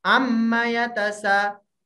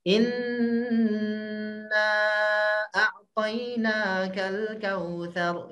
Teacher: Inna n-nya, nun-nya ditahan 3 harokat. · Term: gunnah